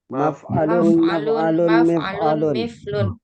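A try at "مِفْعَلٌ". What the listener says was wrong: Mif'alun bukan miflun, mif'alun. Ainnya jangan hilang.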